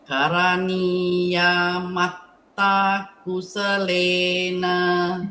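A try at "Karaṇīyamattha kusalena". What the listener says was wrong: Okay, you drag it should be the Karaṇīya, the year is short. Mettā also short. So it should be Karaṇīya Mettā Kusalena.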